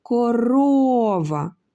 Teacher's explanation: у слові корова наголошеним є другий склад ро